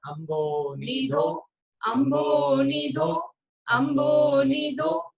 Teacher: धा पर बड़े ओ की मात्रा है तो वो लंबा खींचेगा।